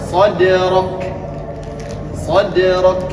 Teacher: Nah, k-nya ini jangan mantul. Kalau ka ini punya sifat namanya hames.